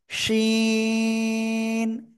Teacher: শাসা শব্দ করে উচ্চারণ করতে হবে তিন আলিফ টান